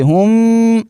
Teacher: یہاں میم ساکن ہے، اس کے بعد با ہے، تو یہاں پر آپ اخفاء شفوی کریں گے، غنہ ناک میں آواز لے جائیں گے